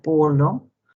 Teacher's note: una oclusiva bilabial sorda, representada por la letra P en la palabra polo